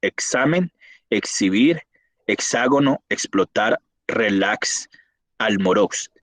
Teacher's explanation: Hay una posición interbólica en el final de la palabra, expresa como un consonante como si fuera KS o GS en pronunciación relajada